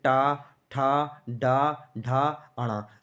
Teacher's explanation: जितने भी आप वर्ण बोलेंगे टा वर्ग के, ये सब मूर्धा से टच होते हुए बोले जाएंगे दोस्तों। तो इसलिए हम इसे क्या कहते हैं, मूर्धा वर्ण या मूर्धन्य व्यंजन कहते हैं दोस्तों।